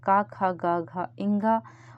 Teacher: कंठ से क वर्ग बोला जाता है। क ख ग घ इंग और आ यह दोनों स्वर यह कंठ है।